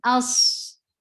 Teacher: give a very sharp sound of hamza and attach with sod. Sod is a heavy letter and it will get it is heavy, it will get rukhawa, it will get safid.